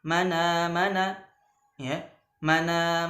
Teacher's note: Misal man amana fataqra'u bi naqli harakatil hamzati ila sakin qablaha ma'a hadfil hamz, ya. Itu dengan memindahkan harakat hamzah, ya, kepada sukun sebelumnya dengan membuang huruf hamzah.